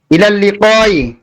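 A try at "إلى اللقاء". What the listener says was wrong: আচ্ছা, আপনারা দুইজনের মধ্যে একজন একটু সমস্যা করতেছিলেন, বারবার শেষে যে সাকিন করতেছিলেন না, এটা ভুল। আপনি মানলেও ভুল, না মানলেও ভুল, ভুল ভুলই সেটা। আপনি আমি মানলেও ভুল, না মানলেও ভুল। হ্যাঁ, শেষে যে সাকিন করবেন, শেষে যে সাকিন করবেন, যখন যেখানে সাকিন করবেন না সেটা আমি বলে দিব যে কোথায় সাকিন করবেন।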